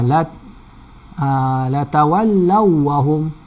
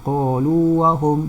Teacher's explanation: Waw lin diidghamkan, manakala waw mat tidak diidghamkan. Antara tanda yang menyebabkan kita tahu bahawa ia tidak diidghamkan iaitu tidak ada sabdu atau tidak ada syaddah di sini.